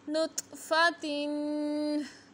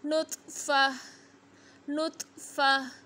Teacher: और जब वक़फ़ करेंगे तो पढ़ेंगे नुत्फ़ा, नुत्फ़ा। ता नहीं पढ़ेंगे, हा साकिन की आवाज़ निकालेंगे